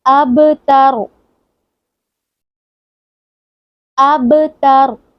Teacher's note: قلقلہ بھی کریں گے اور را کو اینڈ پہ موٹا بھی کریں گے، کیونکہ قلقلہ قاف با طا جیم دال پہ ہوتا ہے، تو یہاں پر با آ گیا تو با کو ہلا کر پڑھیں گے، کیونکہ یہاں پر با ساکن ہے۔